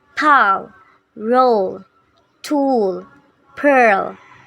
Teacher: the letter L tends to be lost after the back vowels